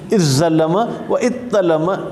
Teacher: इज़्ज़लम भी कहना चाहें तो कह सकते हैं, क्योंकि ता और ज़ा करीबुल मखरज एक दूसरे में इदगाम कर दिया, लेकिन ज़ा को हमने बाकी रखा, या ज़ा को ता में तब्दील किया, ता को ता में इदगाम कर दिया।